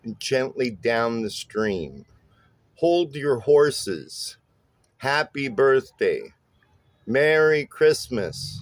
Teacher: it's a stressed syllable followed by an unstressed syllable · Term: trochaic